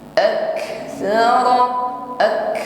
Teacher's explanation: nafas keluar bukan bunyi desis ya bedakan nafas yang keluar dengan bunyi desis ini hanya nafas Tapi kalau ini bisa dikatakan mirip desisan jadi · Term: hamasnya